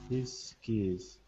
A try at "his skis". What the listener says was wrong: Yeah, putting them together, the two S sounds in there. Good.